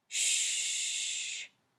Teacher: when you say sh your tongue doesn't move and it never quite touches the top of your mouth